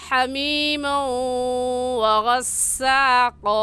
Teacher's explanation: کیونکہ تنوین کے بعد حروف یرملون جو کہ 6 ہیں، یا را میم لام واو نون یرملون، ان میں سے واو آ گیا ہے تو یہاں پر غنہ ادغام کے ساتھ ہوگا